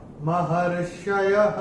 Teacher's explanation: चरण की समाप्ति पे भी विसर्ग का उच्चारण होगा ह